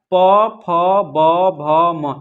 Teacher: इसमें ओठ का प्रयोग कर इसलिए क्या हो जाएगा? ओष्ठ हो जाएगा।